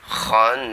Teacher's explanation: kho itu makhrajnya di tenggorokan bagian atas, jadi kho itu ya agak-agak nyantol sedikit, kho di langit-langit, kho itu ya.